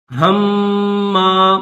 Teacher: میم مشدد ہے، اس پر غنہ کیا جائے گا